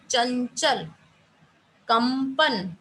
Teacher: अनुस्वार का उच्चारण सिर्फ नाक से लिया जाता है, ठीक है, और सांस अधिक निकलती है। और न या मै की सी ध्वनि आती है, जैसे अगर मैं कहूँ चंचल, कंपन, ठीक है, जहां नई की ध्वनि निकालनी है वहां नई की आएगी, और जहां माँ की निकालनी है वहां माँ की आएगी।